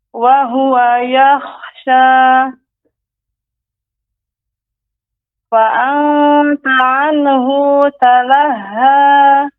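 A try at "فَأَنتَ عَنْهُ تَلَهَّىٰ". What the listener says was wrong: Hu tidak dibaca panjang Ibu, harus fokus ya.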